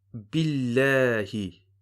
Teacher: if you have a kasra before the word Allah, you read the lam with a flat sound, a flat mouth or empty mouth